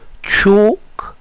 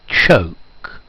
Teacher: the difference between the long O and the diphthong O